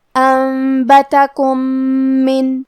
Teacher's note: کلمت من میم حروف الادغام میں سے ہے اور ادغام کا معنی ہے حرف کو حرف میں داخل کرنا، تو ہم یہ میم کو دوسرے میم میں ملا کے ایک ہی میم تشدید اور غنہ کے ساتھ ادا کریں گے